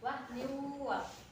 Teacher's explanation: nun tanwin ketemu huruf wawu, dibaca memasuki huruf wawu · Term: idgham biguna